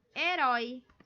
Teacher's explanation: A mais forte é o rói